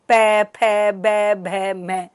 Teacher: अब पै बोला तो आपके होठ एक दूसरे के साथ में टकरा रहे हैं। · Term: पै वर्ग